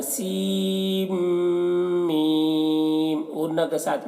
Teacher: سین کے تلفظ میں جو نون ہے اس نون کو نہیں پڑھا جائے گا، بلکہ سین کو میم کے ساتھ ملائیں گے. سیم میم، غنہ کے ساتھ میں میم مشدد ہے تو غنہ کے ساتھ میں اس طرح سے پڑھائیں گے.